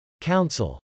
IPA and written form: kˈaʊnsəl (council)